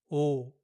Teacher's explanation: this Korean sound is not a combination of two sounds. It's a single pure sound. When Koreans say this letter, they only pronounce the first part of the English O, not the final oo part that comes after O.